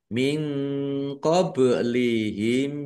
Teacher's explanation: Nun sukun bertemu dengan huruf qof. Bacaan ikhfa dibaca samar-samar.